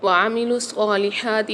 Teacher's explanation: عین کی آواز واضح ہونی چاہیے، عین حلق کے درمیانی حصے سے ادا ہوتا ہے۔